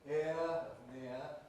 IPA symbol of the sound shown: ɪə